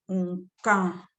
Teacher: The N should be nasalized.